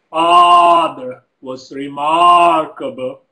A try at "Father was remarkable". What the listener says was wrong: Okay, am I seeing you kind of pull down or working too hard, right, at pulling down the chin and not stretching forward enough?